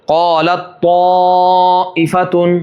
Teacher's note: تا پڑھیں گے ہی نہیں، سیدھا تو کے اندر مخرج جائے گا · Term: ادغام تام